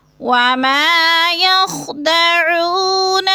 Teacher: وما کو بھی کھینچنا ہے، الف مدہ ہے ، یخدعون او کو بھی تھوڑا سا لمبا کریں گے، وما